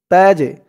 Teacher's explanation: এই জিমটা হচ্ছে কলকলার হরফ ধাক্কা দিয়ে পড়তে হবে তাজে মাউ পেশের পরে ওয়া সাকিন এক আলিফ টানামা বাইনাল বাই